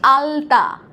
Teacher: আর যখন বলছি আলতা, তখন দেখো দাঁতের পিছনে লাগছে।